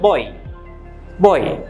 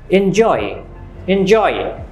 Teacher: এটা হলো ও ই, তো দুটো মিলে কি হচ্ছে? ওই। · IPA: /ɔɪ/